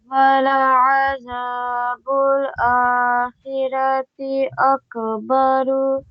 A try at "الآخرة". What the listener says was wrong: Not khira. Khira. It's not khira. It's khira. Kha is heavy. Ra is heavy. Akhirati. Akhirati.